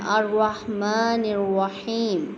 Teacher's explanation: میم کے اوپر کھڑی زبر ہے، اس کو لمبا کرنا ہے